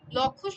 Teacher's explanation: উল্টো শব্দে হচ্ছে মূর্ধায়, লক্ষ্য শব্দে তালুতে ও লিলুগা শব্দে দন্তমূলে ল উচ্চারিত হচ্ছে। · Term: ল মূলধ্বনির সহধ্বনি